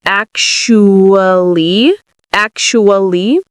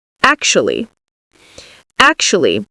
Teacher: Some people say it in 4 syllables, ac-shu-ly, ac-shu-ly. Other people say it in 3 syllables, actually.